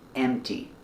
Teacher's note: Remember pronunciation for empty? Don't pronounce the P sound. It's M T. Empty. This drawer is empty.